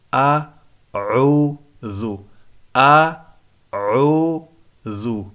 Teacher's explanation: قل اعوذ، بہت سارے لوگوں کو میں نے پڑھتے ہوئے سنا اعوذ، یہ غلط ہے۔ حمزہ بالکل واضح کر کے پڑھیں گے، عین دونوں کا مخرج الگ الگ ہے۔